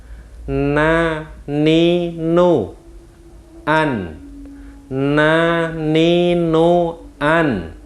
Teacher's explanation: Jadi kita tidak boleh mengeluarkan angin pada waktu mengucapkan nun. · Sifatnya jahar, tidak sambil mengeluarkan angin pada waktu kita mengucapkan nun. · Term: sifat jahar